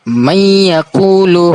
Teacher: Jadi sebutannya nun bertemu dengan ya, may yaqulu. Jadi dia seakan-akan menjadi sabdu tapi dia tidak berbunyi sabdu.